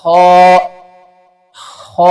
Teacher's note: हलक के ऊपर वाले हिस्से से अदा होता है